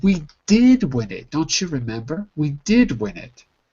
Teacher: you have to put the emphasis on the did